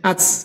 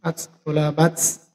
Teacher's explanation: Jadi bila mana ta disukun, maka harus ucapannya harus keluar angin, maka disitu bahasanya hamas, harus keluar angin.